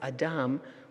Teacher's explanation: pronounced Adam Adam with the accent on the second syllable